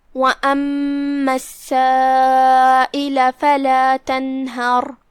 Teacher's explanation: پھر یہاں حرف سین ہے اور اس پہ تشدید ہے کیونکہ اس سے پہلے الف شمسیہ ہے، لہذا ہم 2 حرف کی مقدار میں سین کو ادا کریں گے اور تشدید کو ظاہر کریں گے